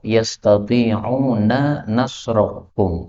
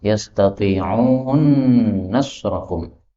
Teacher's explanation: Nun ketemu nun boleh idgham.